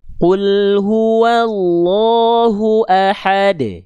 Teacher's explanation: Jangan ada ngeremnya karena seolah menambahkan hamzah sukun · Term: qalqalah